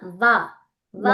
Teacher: ఆ వకారం అనేది చూడండి దంత్యోష్టం అన్నా దంత్యము ఓష్టము